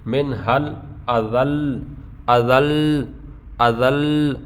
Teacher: لام کو جو ہے تشدید باقی رکھنے کے لیے لام کے اوپر ہم زبان لگا کے رکھیں گے، تھوڑی سی زبان اس کو ٹچ کر کے رکھیں گے، ٹھیک ہے، بہت زیادہ دیر بھی نہیں۔